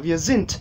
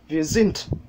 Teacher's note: Mais c'est pas encore ça, wir sind, et ça se termine avec un D et pas un T. Il y a un dévoisement lors de la prononciation du D en fin de mot.